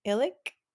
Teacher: it has glottal stop at the beginning and that clicky K at the end